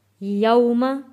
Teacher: واو ساکن سے پہلے زبر ہے، حروف لین ہے، تو ہم نے اس کو جلدی اور نرمی کے ساتھ پڑھنا ہے